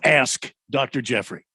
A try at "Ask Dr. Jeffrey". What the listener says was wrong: See, I didn't hear the K. Didn't hear the K pronounced.